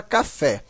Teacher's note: Na palavra café, a sílaba mais forte, né, a sílaba tônica, é o fé.